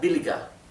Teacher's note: Bueno, acá observen que billiger lo escribí billiger, sin embargo recuerden que la ER final, al final de una palabra, cuando termina en ER, se pronuncia más bien como una A, ¿sí? Y la R es casi imperceptible. Así que esto, en vez de pronunciarse billiger, sería billiger.